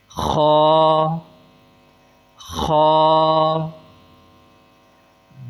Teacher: خا حلق کے اوپر والے حصے سے جو منہ کے سب سے زیادہ قریب ہے وہاں سے ادا ہوتا ہے